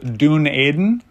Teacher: say it as if you're from Minnesota, and it'll sound pretty close due to the nasalization and monophthongization that exist in both types of speech.